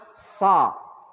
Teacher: Lidahnya saja yang diangkat, terdengarnya nanti seperti ada o. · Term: shad